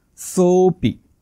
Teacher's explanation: समजा या शब्दामध्ये अवग्रह नसता तर तुम्ही उच्चार केला असता त्याचा सोपी, पण अवग्रह आहे म्हणून ओ या स्वराचा उच्चार थोडासा लांबट करायचा आहे. सोपी.